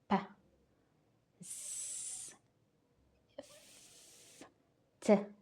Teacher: sounds produced without vibration of the vocal cords, allowing the air to follow freely. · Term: Voiceless